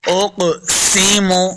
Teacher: قاف حروف مستعلیہ سے اور قلقلہ میں سے بھی ہے تو اس کو خوب واضح کریں گے. اقسم، سین پہ سیٹی کی آواز آئے گی.